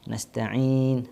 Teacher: Nasta'in, padahal ain belum ke hidung. Yang ke hidung itu adalah nun sukunnya, ujung ya. Ketika sukun pada wakaf nun itu.